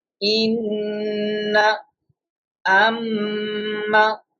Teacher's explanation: The meaning of nasalization is checking the voice into nose, and the duration of nasalization is one alif.